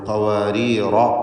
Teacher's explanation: റായിന് വഖഫിന് വേണ്ടി സുക്കൂൻ വരുന്നു, തൊട്ടു മുമ്പിൽ സാക്കിനത്തായ യാ ആണ് ഉള്ളത് എന്നതുകൊണ്ട് റായിന് തർക്കീഖാണ് വരിക. ചേർത്ത് ഓതുമ്പോൾ ഖവാരീറ എന്ന് റായിനെ തഫ്ഖീം ചെയ്യേണ്ടതുമാണ്. എന്നാൽ ആദ്യത്തെ റായ് സ്വാഭാവികമായും തർക്കീഖാണ്, കാരണം അതിന് കസ്റാണല്ലോ.